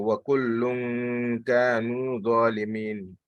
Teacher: the gunna should be such that it should be connecting with the next word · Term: ikhfa